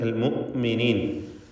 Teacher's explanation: അൽ മുഅ്മിനീൻ ഹംസ കടുപ്പത്തോടെ ഉച്ചരിക്കണം. ഷിദ്ദ എന്ന സ്വഭാവം ഹംസക്കുള്ളതാണ്.